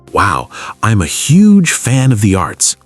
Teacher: put a little stress on the word huge